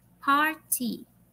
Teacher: the stress or accent is in the first syllable